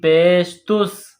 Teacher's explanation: سین کے اوپر جزم کا نشان ہے، تو تا کو سین کے ساتھ ملائیں گے جزم کی وجہ سے۔ تا سین پیش تس، تا سین پیش تس۔